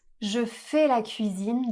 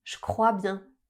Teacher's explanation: devant les mots qui commencent par le son F, K, P, S ou T on va prononcer le son CH au lieu du son J.